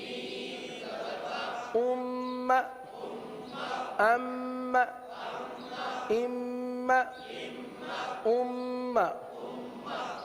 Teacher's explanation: یہ نون مشدد اور میم مشدد ان میں ہمیشہ کیا ہوتا ہے؟ غنہ ہوتا ہے، ہمیشہ غنہ کریں گے، اور غنہ کی مقدار ایک الف کے برابر ہے۔